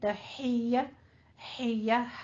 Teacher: تحیہ حیہ ہا باریک وسط حلق سے